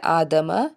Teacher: الف کے اوپر کھڑا زبر، 1 الف کے برابر اس کو کھینچ کے ادا کریں گے